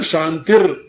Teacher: शांति का जो विसर्ग था वो र बन गया यहां